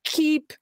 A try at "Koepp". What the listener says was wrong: You got that the O is silent, but it's the shorty instead of the long E. It's cup.